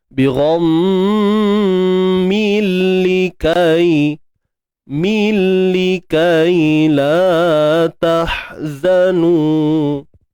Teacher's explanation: Kita masukkan bunyi tanwin ke dalam lam bila gunnah, tanpa dengung. Tanpa dengung. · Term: idgham bila gunnah